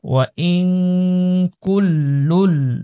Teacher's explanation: নুন সাকিনের পরে ইখফার হরফ কাফ রয়েছে, এজন্য গুণনা করব